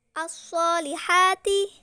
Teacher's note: Ini merupakan hukum bacaan alif lam samsiyah karena huruf alif lam bertemu huruf samsiyah shad dibaca idgham atau masuk ke huruf shad